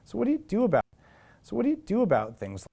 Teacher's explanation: What happens to the auxiliary verb do in this case? It's sort of reduced.